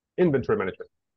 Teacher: The stress is in the in.